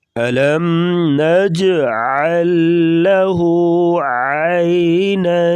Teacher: عین کا تعلق گلے سے ہے، واضح طور پہ نکالیں